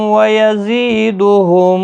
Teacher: زی یا مدہ ہے، ایک الف کی مقدار کے برابر کھینچ کر پڑھیں گے